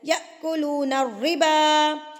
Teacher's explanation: حمزہ کے اوپر جب ایسے جزم آ جاتی ہے تو یہاں پہ جھٹکا دے کے پڑھا جاتا ہے